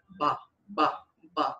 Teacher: se você fizer o B sem tremer as cordas vocais, vira um P.